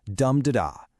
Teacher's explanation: And its opposite number is the dactyl. That's one stressed syllable followed by two unstressed ones.